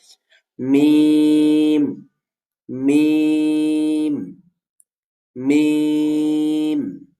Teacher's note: মিম দুই ঠোটের শুকনা অংশ থেকে উচ্চারিত হবে। · কিন্তু আমি আপনাদের আরো সহজ করে ভেঙে বলে দিয়েছিলাম মিম ২ ঠোঁটের কোথা থেকে উচ্চারিত হবে। মিম ২ ঠোঁটের শুকনা অংশ থেকে উচ্চারিত হবে, অর্থাৎ স্বাভাবিক থাকলে হচ্ছে কি, যেভাবে থাকে দেখবেন ঠোঁটের কিছু অংশ শুকনা থাকে, পুরোপুরি কিন্তু স্বাভাবিক থাকলে ভেজা থাকে না।